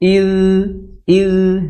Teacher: Yang ada titiknya itu sifatnya rakhawah mengalir suara. Idz idz ya itu ngalir suaranya ngalir.